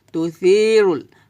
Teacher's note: এখানে তু সি হবে না, হবে তু সি, সি হবে, পাতলা হবে সাটা, জিব্বার আগা উপর দাঁতের আগার সঙ্গে লাগিয়ে পাতলা করে উচ্চারণ করবেন, তু সি রুল।